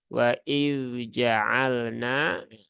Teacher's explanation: huruf dalnya harus diperjelas ya tidak boleh diidgamkan ke dalam huruf Jim sehingga harus dibaca dengan izhar